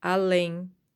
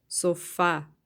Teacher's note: a sílaba forte a sílaba longa vai ser a última sílaba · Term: oxítonas